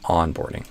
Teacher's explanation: So instead of on, like arroz com feijão, on, I would do on. So ah with no lip rounding, no ooh or ooh sound before the end, just a ah, like the A in father, ah, followed by a tongue tip end